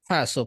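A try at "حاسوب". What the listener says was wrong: Haknya panjang Ustaz. Ha.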